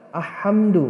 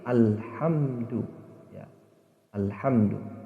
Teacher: ketika membaca alif lam qamariyah, maka huruf lamnya itu masih terdengar, ya, masih disambungkan.